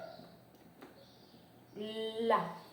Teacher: Você percebe que o ápice da língua, a ponta da língua, vai lá para os alvéolos. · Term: alveolar